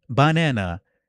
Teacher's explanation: the stress would be on the pitch of the second syllable and not necessarily how powerful it is. So it would be banana or something like that. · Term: pitch accent